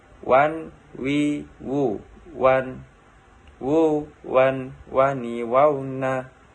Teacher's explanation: Huruf wa diucapkan dengan mengumpulkan dua bibir.